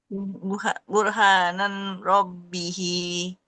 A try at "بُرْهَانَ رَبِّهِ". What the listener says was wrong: burhana bukan burhanan ya.